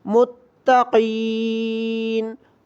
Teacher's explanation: تا پر بھی تشدید ہے تو ہم میم کو تا کے ساتھ جوڑ کر پڑھیں گے اور تھوڑی سختی کے ساتھ ادا کریں گے